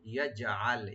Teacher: ইয়াজআল জিমটাকে একটু কলকলা করতে হবে